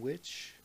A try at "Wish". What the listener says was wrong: Wish? It sounded like you said witch.